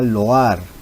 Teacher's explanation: dos vocales abiertas en sílabas distintas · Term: hiato